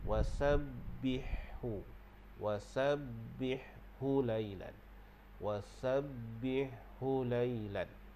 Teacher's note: Kalau huruf ha tu, ha pedah tu, ha pedah makhrajnya di tengah kerongkong. Kalau ha simpul tu adalah di bahagian pangkal kerongkong, berdekatan dengan dada.